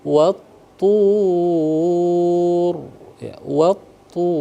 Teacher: dimuncungkan mulutnya agar sempurna tebal huruf ra itu. Wat-tur ya, wat-tur, jadi tebal dia.